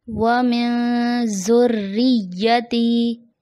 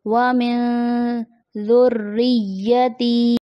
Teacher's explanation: وَمِن ذُرِّيَّتِي، ذال کی جگہ زا کی ادائیگی آ جاتی ہے، جیسے وَمِن ذُرِّيَّتِي. زا اور ذال میں فرق اسی سے ہوتا ہے کہ زا میں سیٹی لاتے ہیں، ذال میں سیٹی نہیں لاتے